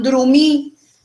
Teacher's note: Observen que además de la alteración, hay la prenasalización de ese fonema consonántico oclusivo que tiene lugar en ese elemento léxico.